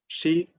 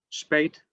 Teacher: sh which represents a [ʃ] sound